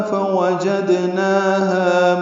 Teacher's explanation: فوجدناہا میں فاء وا جلدی پڑھنے ہیں، جیم کو دال سے ملانا ہے، دال ساکن پہ قلقلہ ہے، نا ہا دونوں کو برابر دو دو حرکات لمبا کرنا ہے۔